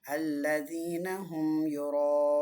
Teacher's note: இந்த ராக்கு மத்து இருக்குது. இந்த மத்து 4 to 5 கவுண்ட்ஸ் நீட்டணும்